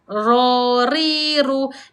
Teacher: Bilaa kita sebut ra ada getaran iaitu takrirlah. Iaitu sifat yang tunggal bagi huruf ra iaitu getaran.